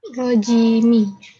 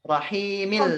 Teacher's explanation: Di rojimnya 2 harokat saja ya. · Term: mat tobi'i